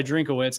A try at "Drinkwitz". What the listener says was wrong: Drinkwitz. I think it's just Drinkwitz. There's no middle syllable. No, just Drinkwitz. Drinkwitz.